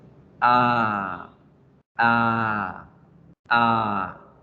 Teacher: Cada vez que ustedes vean 2 punticos en alguno de estos símbolos, quiere decir que debemos alargar la pronunciación. Esta vocal también va a sonar igual que como la hacemos en español, solo que la alargamos en sonido.